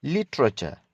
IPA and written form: ˈlɪtrət͡ʃə (literature)